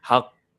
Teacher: Dia kena lambatkan sikit sebab ada qalqalah tu. Ada sabdu. Haqq.